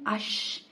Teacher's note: زبان کا درمیانی حصہ جب اوپر تک اٹھتا ہے لیکن پھر بھی گیپ رہتا ہے اور آخر میں تھوڑا سا ایئر فلو جاری رہتا ہے یعنی سانس جاری رہتا ہے. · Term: ہمس